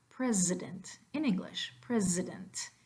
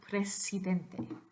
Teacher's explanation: You've got a Z, the voiced version there.